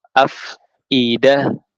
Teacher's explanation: Harus banyak sebaran udaranya. Nggak boleh up idah, nanti jadinya huruf T atau B